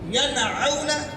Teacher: نون ساکن کے بعد عین آ گیا ہے، اظہار ہوگا، ین نہیں کر سکتے، ینعون کہیں گے۔